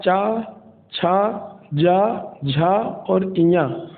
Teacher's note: तो जो चा वर्ग की ध्वनियाँ होती हैं वो मुख्य रूप से तालव्य वर्ण के अंतर्गत आती हैं, अर्थात चा, छा, जा, झा और इया के उच्चारण में हमारी जिह्वा ऊपर के तालु में जाकर स्पर्श करती है, इसलिए इनको तालव्य वर्ण कहते हैं